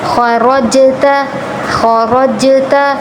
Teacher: خا را پر تفخیم، جیم پر قلقلہ